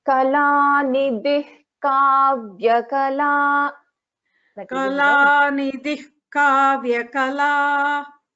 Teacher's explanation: after nidhi, we have visarga, and then we have ka. So we will not pronounce complete visarga.